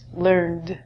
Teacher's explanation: And American English is learned. This is going to end in a D sound.